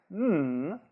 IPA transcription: n